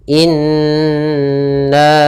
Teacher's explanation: ada hukum tajwid berupa gunnah, yaitu ditandai dengan nun yang berharakat tasydid. Maka caranya adalah kita tahan dulu suara nunnya